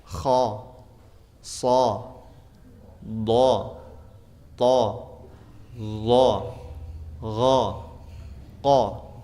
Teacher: yang isti'ala itu kalau dari segi suara kita dengarkan berbunyi o, kha, sa, do, to, zo, gha, qa, semuanya berbunyi o.